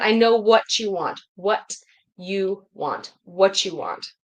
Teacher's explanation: t plus y turns into a CH sound